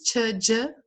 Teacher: As africadas tch, j, né? Então, quem fala atividade, tia, dia, utiliza esses sons.